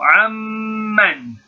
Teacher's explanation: We merge it into the meme. So the noon is still there present in writing, but it's not present in pronunciation due to the fact that noon and meme both have that nasal sound. So amman.